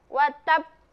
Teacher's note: Jadi penuhi dulu tasdidnya, kemudian qalqalah, pantulkan.